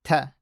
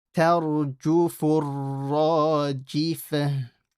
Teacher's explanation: that ta has to remain empty mouth. Don't make this full. Don't say tarju, ta.